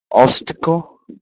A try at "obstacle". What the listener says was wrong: I just want to hear the number 5 again. I want to hear the B a little bit more clearly. Obstacle.